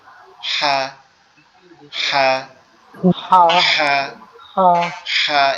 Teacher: এই যে হা অক্ষরটা, এটা হচ্ছে আমাদের এই কণ্ঠনালীর মধ্যখান থেকে উচ্চারিত হবে, একটু চাপা আওয়াজে, ফ্যাসফ্যাসানি আওয়াজে। মানে আমাদের গ্রামগঞ্জে বা আমাদের বাসায় যে বাসা বাড়িতে হাঁসগুলা পালে না, হাঁসগুলো অনেকটা ফ্যাস ফ্যাস আওয়াজে করে, এরকম এটাও একটু ফ্যাস ফ্যাস আওয়াজে উচ্চারণ হবে।